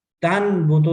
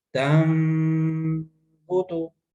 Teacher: تن بوتو نہیں پڑھیں گے، اس کو تن بوتو نہیں پڑھیں گے، بلکہ تم بوتو. میم کا ساؤنڈ دیں گے نون کو اور غنہ کریں گے، نون کو میم کا ساؤنڈ ہوتے ہوئے اور غنہ کریں گے. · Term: اقلاب